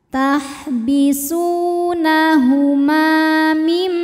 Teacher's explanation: Sebab ada alif yang sebelumnya berharokat fathah. Cara membacanya huruf mim dipanjangkan 2 harokat. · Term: mad tabi'i dhahiri